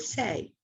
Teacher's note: talk we don't talk like that i say the word say that s is very very soft has very little energy very high pitched if we isolated it and measured just that sound so that